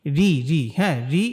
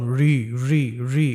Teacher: র এর নিচে যদি জের হয় অথবা র সাকিন ডাইনে জের হলে ওই রকে আমরা পাতলা করে পড়ব